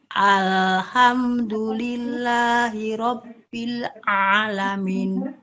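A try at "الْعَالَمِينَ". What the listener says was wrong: Ya, masih ke hidung ya Bun, dikit ya. Masih ke hidung. Alamin, masih begitu Bun. Jadi jangan ditutup pun, coba gini ditutup. Alhamdulillahirabbil alamin. Alamin, dicoba ditutup ya hidungnya. Ketika menyebutkan A-nya itu ditutup.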